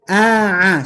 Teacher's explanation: ada Ain yang menggunakan Tengah tenggorokan